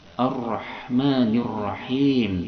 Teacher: Ini ada alif lam syamsiyah yang mana lamnya tidak dibaca.